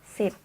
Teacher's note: the sound is called voiceless alveolar fricatives